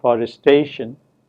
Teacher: in forestation what we notice is that the vowel in the second syllable is a reduced vowel